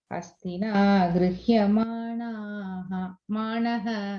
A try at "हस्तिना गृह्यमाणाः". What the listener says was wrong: Yeah, that's what I was going to correct. You're saying manaha.